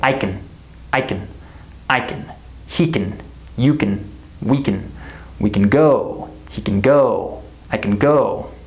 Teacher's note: I say I can go. Can is not stressed in our sentences.